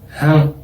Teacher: La virgulilla solo va a indicar que la A es nasalizada.